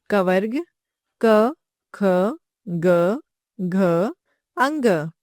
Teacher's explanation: इन व्यंजनों का उच्चारण करते समय जीभ, कंठ तथा तालु का स्पर्श करती है। इसलिए इन्हें स्पर्श व्यंजन कहा जाता है।